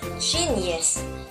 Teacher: the stress there is in the gym in the first syllable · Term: stress syllables